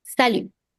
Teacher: the T at the end of salut is silent. We do not pronounce it.